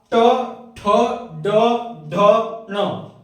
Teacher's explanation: इसका उच्चारण करेंगे तो आपका जीभ का जो अग्र भाग है है ना वो आपका मोड़ के क्या होगा तालू को टच करेगा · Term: मूर्धन्य व्यंजन